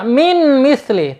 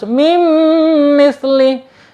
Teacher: Mim mislihi, mim ya, di situ ada min, nun sukun ketemu huruf mim ya. Nggak boleh dibaca min misli, tetapi harus mim misli, ditekan dan ditahan 2 harokat. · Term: idgham biguna